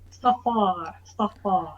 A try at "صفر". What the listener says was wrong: So صفر, صفر, صفر is deeper. صفر.